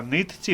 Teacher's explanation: слово нитці передаємо через подовжений звук цю